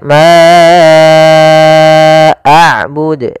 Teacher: ada bacaan Mad Jaiz munfasil yaitu panjangnya kita harus panjangkan empat harakat